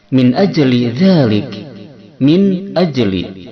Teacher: nun mati bertemu dengan hamzah hukumnya adalah idhar halqi